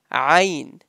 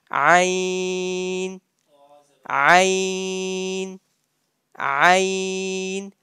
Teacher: Ain, ain, ain, pronounced from the middle and center of your throat.